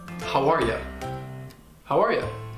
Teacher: It's perfectly fine to say you, but sometimes native English speakers will reduce it with the schwa and it'll sound like ya. · native speakers will kind of link the first two words together. So the final sound in how and the initial sound in R will get blended to sound like hawar. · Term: reduced schwa sound